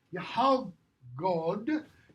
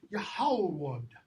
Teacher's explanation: Both of these, that G changes. Totally changes. Okay? It becomes a W sound. So Yahalgod becomes Yahalwod.